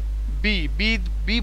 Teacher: বিলাবিয়াল consonant বলতে ঠোঁট দিয়ে উচ্চারিত হয়, আমি এক কথায় সহজে বোঝালাম, সেটা হচ্ছে ঠোঁট দিয়ে উচ্চারিত হয়, এটার আর্টিকুলেশন সেম প্লেস থেকে হয়। যেমন বি বি বি বলার সাথে সাথে একবার দুই ঠোঁট একটা ধাক্কা খেয়ে ফাঁকা হয়ে যাচ্ছে